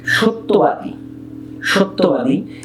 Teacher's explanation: জফলার আগের বর্ণে অ থাকলে সেটি ওকার উচ্চারিত হয়। আমরা এখানে যে সূত্রটি শিখছি সেই সূত্রটি হলো জফলা যার সঙ্গে আছে শব্দের মধ্যে কিংবা শেষে, সেই জফলাযুক্ত ধ্বনিটির দ্বিত্ব হয়।